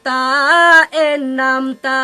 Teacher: জিহিবার অগ্র এবং সামনের উপরের দুই দাঁতের ভিতর দিকের গোড়ার সাথে লাগিয়ে যার উচ্চারণ করতে হয়